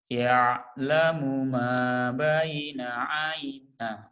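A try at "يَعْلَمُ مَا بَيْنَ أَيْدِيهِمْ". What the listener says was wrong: Ai, jangan ai ya. Itu ya yang bikin jelek tuh itu. Jadi jadi ke hidung ini. Kan ini ain jangan ke hidung ya. Ya'lamu ma baina aidihim.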